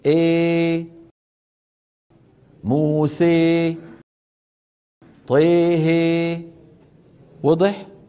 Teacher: نوعا كبرى بين الالف والياء تماما يعني 50% الف 50% ياء شوف الفم الفم مفتوح وبنفس الوقت وسط اللسان ايه مرفوع موسي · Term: الاماله الكبرى